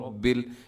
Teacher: جب را کے اوپر کوئی حرکت ہوتی ہے را موٹی ہوتی ہے، رب ایسے منہ بھر کے آپ نے اس کو پڑھنا ہے